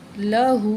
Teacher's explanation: وَكَانَ لَهُ، ہاں الٹا پیش ہو، لہو، یہاں الٹا پیش ہے یہ، تو اس کو جو ہے ہم نے ہاں کے اوپر ایک الف کے برابر کھینچ کے پڑھیں گے